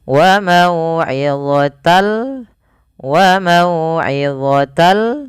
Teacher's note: fathatainya pada lafaz awalnya mauidotan ketemu lam masukkan lam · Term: idgam bila ghunah